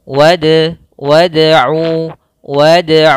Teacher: ke huruf da Dal termasuk salah satu sifatnya huruf Qalqalah teman-teman maka di sini kita pantulkan Qalqalah maka memantul hurufnya